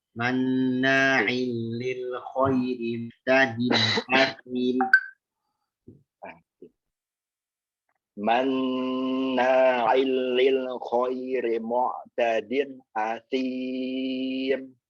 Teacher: Hati-hati hamzah jangan nempur ain itu. Jadi kayak nempur asim itu kayak ada ain. Murni hamzahnya.